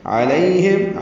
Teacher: عین وسط حلق سے نکالیں گے، لیہم پڑھیں گے، غیر المغضوب علیہم سورۃ الفاتحہ میں 2 مرتبہ ہے، علیہم لوگ پڑھتے ہیں، یہ غلط ہے۔